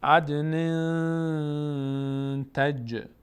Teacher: عد نن تنوین بعدش تی آمده اخفا میشه. عدن تج. جیم هم مثل دال مقداری در مخرجش میلرزه.